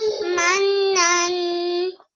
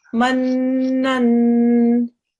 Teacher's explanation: has made sure that she's pronounced the meme and the noon, and she's pressed down on the noon because it's mushaddad. She's also done the 2-second gunna sound, and then she's activated the tanveen at the top as well.